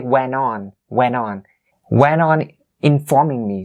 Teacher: when the T sound is following an N sound, it is considered less important. And so North American native speakers would leave it out and just use the end as is ending sound in this case.